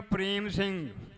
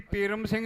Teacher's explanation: ਪ੍ਰੇਮ ਸਿੰਘ ਜਦੋਂ ਕਹਿੰਦੇ ਆ ਰਾਰਾ ਅੱਧੇ ਸਮੇਂ 'ਚ ਬੋਲ ਹੁੰਦਾ ਆ